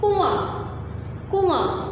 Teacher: کنواں میں آپ جو نون کی آواز کو چھپا رہے ہیں آپ اس کو ظاہر نہیں کر رہے · نون کی آواز جو لکھی ہوگی ہم اس کو ناک میں چھپا کے پڑھیں گے